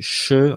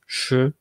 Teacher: c'est des consonnes qui sont rétroflexes un peu, c'est-à-dire que la pointe de la langue est un peu relevée, contrairement à un ch français par exemple. En français c'est ch, en polonais c'est plus ch.